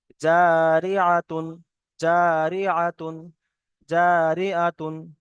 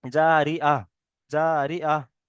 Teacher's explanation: এই তাটা হা উচ্চারণ হবে, হা সাকিন হবে, ঠিক আছে। তাটা হা উচ্চারণ হবে, তাহলে তো এই যে দু পেশ তানবিন আছে, তানবিনটা পুরো বাদ চলে যাবে।